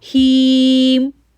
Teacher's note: آگے ہیم کو کھینچیں گے کیونکہ یا ساکن سے پہلے زیر ہے، ہیم. میک شور کہ یہاں پر کلکلا نہ بنے.